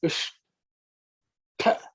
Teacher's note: Ish is the cerebral sh, where the tongue should point upwards towards the roof of the mouth